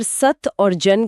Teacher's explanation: अगर सत और जन के उच्चारण की शारीरिक प्रक्रिया पर ध्यान दिया जाए तो त बोलने के लिए जीभ की नोक को दांतों के एकदम पीछे लगाना पड़ता है।